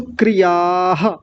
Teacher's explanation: आ की हल्की सी ध्वनि पहले भी आएगी। बीच में विसर्ग और आ की हल्की सी ध्वनि बाद में आएगी। यह स्वर के साथ मिलकर के चलती है इसकी विसर्ग की ध्वनि।